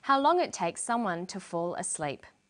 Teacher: She uses falling intonation. This is how we know the list is finished.